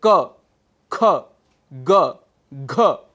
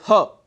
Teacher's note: आइए, जो हमारा उच्चारण स्थान है कंठ अर्थात एपिग्लॉटिस, जो हमारे गला जो है वहाँ पर आप अगर हाथ रखकर कुछ बोलेंगे तो जो वर्ण बेसिकली कंठ हैं, कंठ से बोले जाते हैं, उस समय यहाँ पर वाइब्रेशन हमको फील होती है